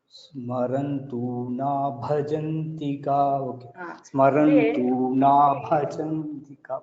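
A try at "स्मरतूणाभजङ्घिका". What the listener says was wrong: There, Smarant is not there. There is no Nakara after Smara. Smaratuna, Smaratuna Bhajanthika.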